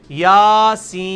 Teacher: کھڑی زبر، یاسین، سین کو آپ 5 سے 6 الف لے کے جائیں گے